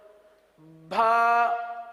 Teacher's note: اب اس با کے اندر بھی کچھ غلطیاں کی جاتی ہیں، اس طرح کی غلطیاں ہو جاتی ہیں، مثال کے طور پر بھا یعنی با کے ساتھ ہا کی آواز نکالی جاتی ہے